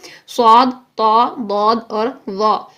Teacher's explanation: ابھی میں نے آپ کو بتایا کہ یہ چاروں حروف میں زبان کی جڑ بھی اوپر اٹھے گی تو یہ سنگل لیول کی تفخیم ہوئی، جب زبان کا درمیان بھی اوپر اٹھ جائے گا تو یہ ڈبل لیول کی تفخیم ہوگی. اسی وجہ سے یہ حروف خوب موٹے پڑے جاتے ہیں، پورے منہ بھر کے ادا ہوتے ہیں، ان میں آواز منہ میں پوری بھر جاتی ہے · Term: اطباق